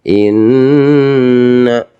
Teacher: apabila kok ada huruf nun bertasjid ya atau mim bertasjid dalam ilmu tajwid dinamakan pembacaan ghunah. Cara membaca pasti dibaca dua ketukan.